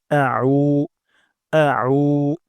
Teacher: উমজা হবে না এখানে আইন উচ্চারণ করতে হবে এটা খুবই গুরুত্বপূর্ণ আমরা আইন উচ্চারণ করবো গলার মাঝখান থেকে